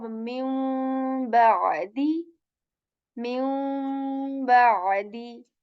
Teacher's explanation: we will replace this noon with the meme sound, but the ghunna will carry on